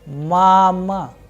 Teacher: the sound of first vowel a is higher, whereas the sound of second a is lower. That is why the pronunciation is mama. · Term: stress